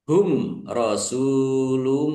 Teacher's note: Mim sukun bertemu dengan huruf ro. Izhar syafawi dibaca jelas.